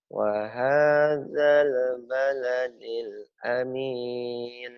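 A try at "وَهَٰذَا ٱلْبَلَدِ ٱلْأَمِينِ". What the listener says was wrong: Tuh, itu udah bagus, cuman lebay kamu ada. Artikulasi. Kalau dia kebanyakan cengkoknya. Wa baladil amin. Itu kan kayak suara kakek kan kalau saya tuh.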